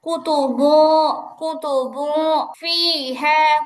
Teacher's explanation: যেহেতু মোটা হরফ মোটা করে গুনা করতে হবে গুন্নাটা উপরের দিকে যাবে।